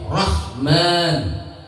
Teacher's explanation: Ha itu makhrajnya di tengah tenggorokan ya.